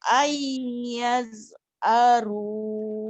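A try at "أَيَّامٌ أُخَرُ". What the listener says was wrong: Ibu kalau ada H pasti aru. Ayat haru. Jangan ayat aru ya Bu.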